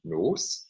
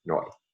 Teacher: there an S in the coda of the syllable becomes a glide in Italian, giving Italian noi.